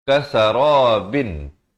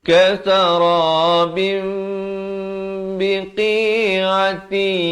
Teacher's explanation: Jadi ditukarkan, ini cara bacaan hukum iqlab. Ditukarkan bunyi nun, bin, kepada bunyi mim. Jadi bim. Tapi jangan lupa, panjangkan dua harakat.